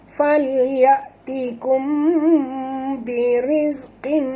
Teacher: mim mati bertemu ba, ikhfa syafawi, dengung, tutup mulut.